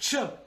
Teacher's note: The CH, ch, is a combination of a T and an SH. And if you think about that, and you put them together quickly, you get the CH sound.